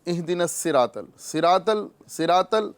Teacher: صاد اس کو پر کرنا ہے، ورنہ اکثر و بیشتر صاد کو لوگ سین پڑھ رہے ہوتے ہیں